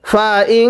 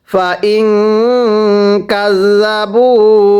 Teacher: নুন সাকিনের পরে কাপ ইকফা হরফ গুন্নাহ করে পড়তে হবে।